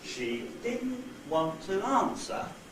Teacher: Now, if I change that slightly, change the intonation of that slightly, change the pitch contour slightly, say I did this instead, so that now want is lower than the second syllable of didn't, there's a step down, that means that now want is accented as well